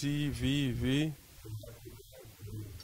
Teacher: Al decir sí, vi, tenemos dos veces este sonido fricativo